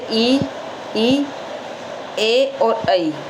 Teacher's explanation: वे स्वर जिनका उच्चारण जीवा के अग्रभाग से होता है और संख्या में 4 हैं ये, जैसे ई, ए और ऐ।